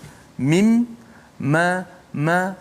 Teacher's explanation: Mim walaupun kita sebut kat bibir, tapi kita tak boleh sebut mim tanpa melalui suara mim kat hidung. Mim, ma, kalau kita tutup hidung tak akan keluar suara huruf mim kalau kita sebut mim, sebab dia ada 2 makhraj di situ. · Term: gunnah